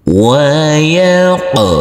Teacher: huruf qof harus kita pantulkan karena ini adalah bacaan Qalqalah